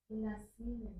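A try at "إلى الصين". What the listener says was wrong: Ilas. Ilas sini. Ya, ini bukan percakapan jadi harus diharokat ya. Ilas sini.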